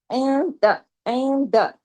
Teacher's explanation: نون ساکن کے بعد دال ہے نا، اس پر حقیقی غنہ کامل ہے